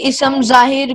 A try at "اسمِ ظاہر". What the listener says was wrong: اس میں ظاہر بولنا ہے, میم کے نیچے زیر لکھی ہوئی ہے نا, اس میں ظاہر کو.